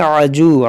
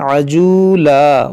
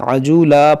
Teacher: وقف کریں گے تو دو زبر کو الف سے بدلیں گے، عجولا پڑھیں گے